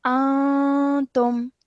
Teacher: a nasal sound, which we hold in our nose for 2 seconds. So like you did very nicely, you said this as antum.